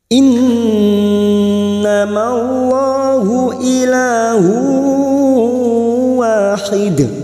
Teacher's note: lam jalalah yang didahului fathah kita baca tafkhim atau tebal.